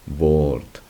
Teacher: la R no es una R fuerte, sino que es una R suave, que más bien en este caso y en muchos casos lo que hace es alargar el sonido de la vocal